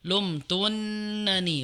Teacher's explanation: Jadi intinya yang double adalah yang depan, adapun yang belakang tidak. Jadi qalat fadzalikunna alladzi lumtunnani fi, bukan lumtunanni.